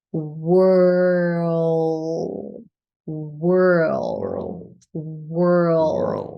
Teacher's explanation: add the dark l so remember the L with a lot of tension in the back of the tongue WHL world world and then you add a little D at